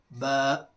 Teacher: یہ دونوں ہونٹ کے گیلے حصے کو آپس میں ملانے سے ادا ہوتا ہے۔ دونوں ہونٹ، اس کا جو گیلا ہمیشہ بھیگا ہوا حصہ رہتا ہے۔